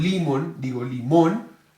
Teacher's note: la palabra limón tiene 2 sílabas cierto la sílaba tónica es la última